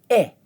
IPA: ɪ